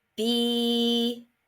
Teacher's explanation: There's no consonant closing the vowel sound. I'm saying the vowel name. It's the long vowel sound. This is an open syllable word.